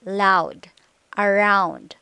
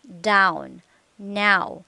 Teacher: you move toward ow lips begin to close and become tense your tongue's position moves from relaxed low to high position